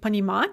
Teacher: pattern by far so when in doubt go with this is the stress is fixed on the stem it never moves